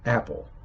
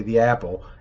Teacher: there's a little glottal stop there at the beginning before the A, apple. But in sentences, or when the word apple is paired with other words, sometimes that glottal stop totally goes away.